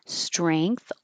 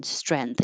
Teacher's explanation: strength with an A and an NG, strength or strength with an E and no NG, just an N, strength. Either way is fine.